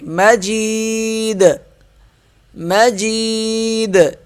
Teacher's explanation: وقف مجید. وقف جب کریں گے تو دال پہ ہم قلقلہ کریں گے، یعنی آواز کو ذرا سا ہلائیں گے،